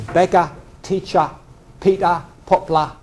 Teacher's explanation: poplar beggar doctor teacher are all schwa in RP and they're all moved down in London · So the schwa does tend, at the end of words, it tends to move down to an a sound.